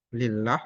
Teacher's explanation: In akhadallahu, ini Allah dibaca tebal, lafzul jalalah tafkhim karena didahului fathah. Kalau kasrah tipis, lillah atau zillah, nah, Allahnya tipis, L biasa